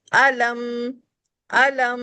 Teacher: मैं सिर्फ मीम को मुकम्मल अदा कर रही हूं। तो मीम पर जब भी वफ करेंगे तो इसकी साउंड को मुकम्मल अदा करने के लिए वन फिंगर तक इसके साउंड पर हंठ मिलाएंगे। अलम लेकिन ये गुने में नहीं जाएगा। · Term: मीम साकिन